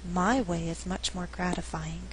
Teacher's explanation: it's necessary to stress a function word the function word is my we're contrasting the two ways of viewing the world again my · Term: stress for emphasis